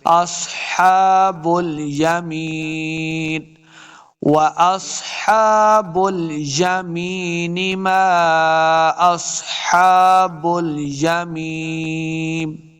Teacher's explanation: سواد کو موٹا پڑھیں گے. سواد حروف مستعلیہ سے ہے.